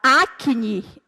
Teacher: quando eu falo a palavra acne eu escuto o som do cê e escuto a sílaba nhi